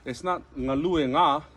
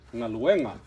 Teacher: So the emphasis changes to the second to the last syllable.